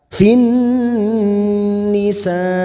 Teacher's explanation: Wa yastaftunaka fin nisa, wa yastaftunaka, wa yastaftu duma diikuti waw sukun 2 harokat, tunaka fin masuk ke alif lam samsiah atau idgham samsiah, fin nun yang bertasdid kita dengungkan selama 3 harokat